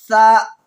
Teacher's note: سا زبان کی نوک اور ثنایا الیہ کا کنارہ، جو سامنے کا جو چوڑا دانت ہوتا ہے اوپر کے دانت میں زبان کی نوک کو ثنایا الیہ کا کنارہ لگائیں گے، وہاں سے سا ادا ہوگا · सामने का जो चौड़ा दांत होता है ऊपर के दांत में जबान की नो को सनाया उलिया का किनारा लगाएंगे वहां से सा अदा होगा